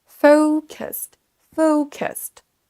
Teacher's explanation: L'accentuation se fait sur la première syllabe, donc c'est cette syllabe qu'on va prononcer un petit peu plus fort et plus longtemps.